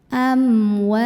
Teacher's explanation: Maka cara membunyikannya, huruf waw yang fathah kita panjangkan 2 harokat. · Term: mad tabi'i